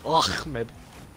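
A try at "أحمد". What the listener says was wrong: No, you need more phlegm.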